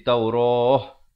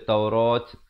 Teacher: Kalau waqaf di sini jadi Taurah. Jangan pula baca Taurat.